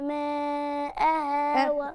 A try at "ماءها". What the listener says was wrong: تلات، اتنين ونص، تلاتة إلا، هم أربعة، ده مد واجب، الهمزة جاية بعد حرف المد في كلمة واحدة، يبقى المد الفترة الزمنية أربع حركات.